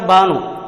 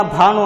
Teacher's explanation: ಇದು ಅಲ್ಪಪ್ರಾಣ ಬಾನು. ಮಹಾಪ್ರಾಣ ಭಾನು ಅಂತಂದ್ರೆ ಸೂರ್ಯ